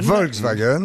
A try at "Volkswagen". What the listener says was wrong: Non, Volk. Volk. Croyez-moi, c'est Volk. Volk, c'est un V, ça se prononce feu.